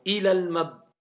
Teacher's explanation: Parce que quand il y a alif ou lam, quand on fait la liaison, on prolonge plus la voyelle longue. On passe directement.